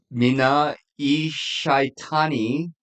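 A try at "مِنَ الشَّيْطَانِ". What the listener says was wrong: No, that's an L. That's a letter L. Minal.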